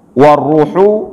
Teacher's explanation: Nah, ini namanya mad jaiz, maka dibaca 4 sampai dengan 5 juga. Warruhu, ra di sini huruf ra yang tebal.